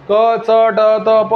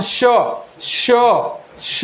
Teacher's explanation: श श स यांचा उच्चार करताना तोंडातून जोराने उसासा बाहेर टाकला जातो. यामुळे घर्षण निर्माण होऊन उष्णता निर्माण होते, म्हणून त्यांना उष्मे असे म्हणतात. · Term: घर्षक